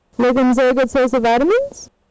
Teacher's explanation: does not have any rise or fall all the way till the word vitamins where we have a very sharp rise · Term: high Rising statement